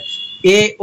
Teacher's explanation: जिन स्वरों के उच्चारण में आधा मुख बंद होता है यानी हाफ क्लोज होता है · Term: अर्ध समृत